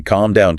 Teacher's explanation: If you hear someone say, calm down, with a very distinctive, breathy, scraping K sound in the back of the throat, you're hearing Scouse.